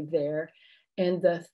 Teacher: vibration in your throat when you say there and the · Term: voiced